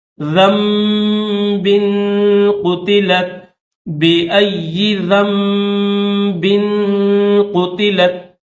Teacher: اس نون ساکن کو میم کے اندر کنورٹ کر دیں گے، میم کے ساتھ کنورٹ کر دیں گے. ٹھیک ہے دوستو، تو یہاں پر نون نہیں پڑھیں گے بلکہ کیا پڑھیں گے، ذال کو اس چھوٹے سے میم کے ساتھ ملا دیں گے.